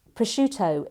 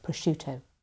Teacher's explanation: Prosciutto, it's got this cluster of SC in the middle, which makes often people think there should be a sk sound in there. But the I that comes after the C softens the SC to be a sh sound, not a sk sound. So it's prosciutto.